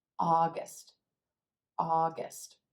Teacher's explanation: the lips are gonna pull in ah ah August August again that first syllable that ah sound is going to be stretched we're going to say it a little longer with a little more energy the second syllable in contrast is gonna be quicker quieter August